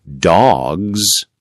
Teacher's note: In dogs, the S sounds like a soft Z.